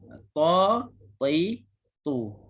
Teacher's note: huruf ta kena tebal. Kebanyakan bahagian lidah naik ke langit atas.